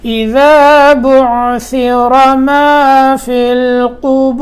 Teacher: ذال اذا بعثر ثا، ذال اور ثا ایک جگہ سے، را موٹا